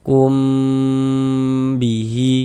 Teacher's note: Hukumnya ikhfa syafawi, maka dibaca dengan dengungan. Jadi di bagian kumnya itu suaranya itu kita tahan, kita panjangkan sejenak ya, kira-kira sepanjang dua harakat.